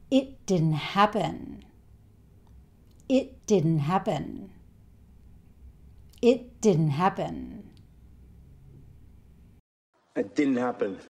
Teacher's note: he doesn't really say the t sound at the end of it. He stops himself just before he makes the t sound. And he doesn't even try to say the t sound at the end of didn't.